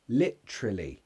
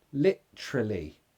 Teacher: You actually have a glottal stop there. Literally. Schwa.